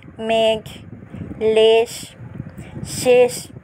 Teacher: তৎসম শব্দের প্রথমে এ সমৃত হবে উদাহরণ মেঘ লেশ শেষ এখানেও কিন্তু এমন করে উচ্চারণ হয়েছে তৎসম